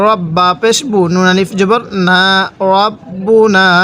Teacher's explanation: র লাগবে এবার এই বায়ের সাথে রব। অনেকে আমরা রটাকে রা পড়ি, র জবর রা পড়ি, এরকমভাবে পড়ব না, র জবর র পড়ব।